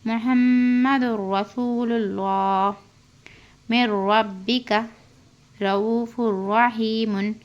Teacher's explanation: تنوین کے بعد را آ کر ہے، اس میں بغیر غنہ کرنا، اور اللہ سے پہلے لفظ اللہ سے پہلے پیش ہے، اس لیے اللہ کی لام کو موٹی پڑھنا